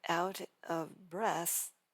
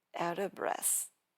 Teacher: delete the V entirely and jump directly from T sound of out to the next word. Drop the V completely.